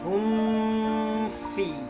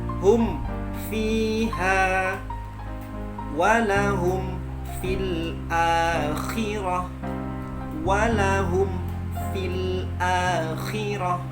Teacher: Hum fi, itu tidak boleh digeser atau diseret-seret, tidak boleh. Tapi dimatikan mimnya, baru kita pindah ke makhraj fa